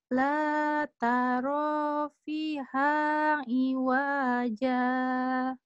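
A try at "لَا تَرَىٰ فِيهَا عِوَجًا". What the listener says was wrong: Wanya pendek. La taro fihang iwaja. Iwaja. Itu wanya pendek ya. Iya, V-nya panjang ya. La taro fiha iwaja. Ya, penekanan di ain masih kurang. Iwaja, gitu ya. La taro fiha iwaja.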